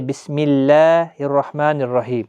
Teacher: اللہ کے لام سے پہلے جب زبر ہوتی ہے تو وہ پر پڑھا جاتا ہے، جب زیر ہوتی ہے تو جیسے بسم اللہ الرحمن الرحیم تو وہاں پہ باریک پڑھا جاتا ہے